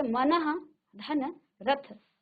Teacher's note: जैसे मनः, देखो विसर्ग में आपको हमने वर्ण विच्छेद में आपको समझाया था कि जो विसर्ग है उसको ह, आधा ह में हम इसको उच्चारित करते हैं